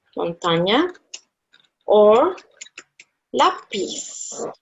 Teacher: So, the second before last syllable gets the accent. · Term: palabras llana